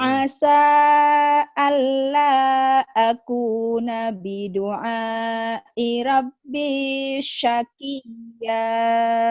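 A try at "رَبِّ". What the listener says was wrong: Rohnya kenapa Rabbi ya? Keturunan Makci Ramla ya? Bukan Ra.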